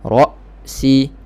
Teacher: Hamzah matikan. Putuskan suara betul-betul. Sharp. Ra-si.